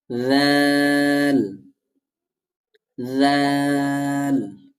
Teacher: জিহ্বার আগা সামনে উপরের দুই দাতের আগা